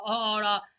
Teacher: कंठ स्वर में कंठ से जो ध्वनि निकलती है वह अ और आ से निकलती है